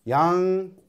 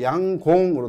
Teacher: 얘 같은 경우에는 양곤이니까 니은으로 끝나거나 네, 실제로는 그 현지 발음을 들어보게 되면 양곤이 아니고 양공으로 들립니다. 실제로는 들어보면 양공으로 들려요.